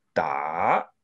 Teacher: it's read in Mandarin as da, rising tone there